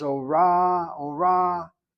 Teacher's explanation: the emphasis is on the second syllable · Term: accent that irregular syllable